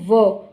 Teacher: व को जब हम बोलते हैं तो व दांत और ऊठ दोनों मिलते हैं